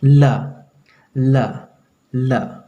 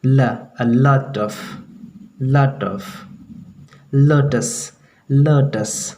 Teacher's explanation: वो ला नहीं बल्कि दांत में सटा करके जीभ को बोलना है